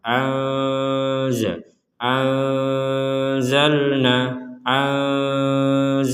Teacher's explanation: nun sukun bertemu Zai kita baca dengan samar ANZ anzalna anzalna seperti itu kemudian di sini ada harakat bendera